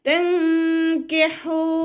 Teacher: നൂനിൻ്റെ സൗണ്ടിനെ ഒന്ന് ഹൈഡ് ചെയ്യുകയും ചെയ്യുക, അതോടൊപ്പം തന്നെ മണിക്കും ചെയ്യുക